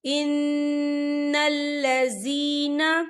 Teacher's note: ہم الضالون ان الذین، یہ دیکھیں ان نون مشدد ہے، یہاں پر غنہ ہوگا، اور لذین یہاں پہ یا مدہ ہو رہا ہے، یا ساکن ہے، یا ساکن سے پہلے زیر ہے تو ہم اسے 2 یا 3 حرکت کے برابر کھینچ کے پڑھیں گے